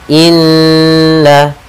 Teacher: Pada bacaan inna di sini ada lafal nun bertasydid, kita namakan dengan bacaan gunnah, atau hukum tajwidnya kita namakan dengan gunnah. Cara membacanya adalah kita menahan suara n-nya 2 harakat.